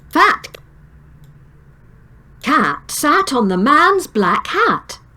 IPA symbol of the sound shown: æ